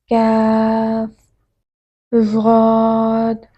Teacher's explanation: کاف، قاف کے مقابلے میں زبان کے درمیانی حصے سے نرم دباؤ کے ساتھ ادا کریں